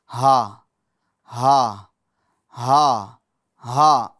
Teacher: ہا اس کا ادائیگی کا طریقہ کیا ہے؟ شروع حلق سے ادا ہوتی ہے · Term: دو چشمے والی ہا